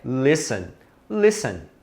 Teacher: ele tem um T aí no meio que você não fala, tá? Então você não deve pronunciar listen, não existe listen, é listen, ignora esse T.